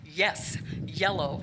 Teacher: palatal your tongue's bed touching the roof of your mouth